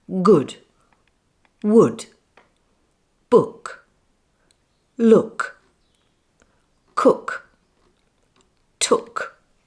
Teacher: so the lips are rounded my jaw is more closed and my tongue is slightly rounded pushed back a little towards the soft palate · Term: central vowel sound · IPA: /ʊ/